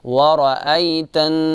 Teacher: آئی کو جو ہے نرمی کے ساتھ ادا کریں گے چونکہ یہاں پر صفت لین ہے